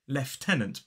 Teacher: in a modern British RP accent this word is pronounced leftenant three syllables the stress falls on the second syllable · it has the F sound in it but look at the word there is no F in that word · 3 syllables, the stress falls on the second syllable, so it's lieutenant. But you'll hear the way that we pronounce it, it has the f sound in it.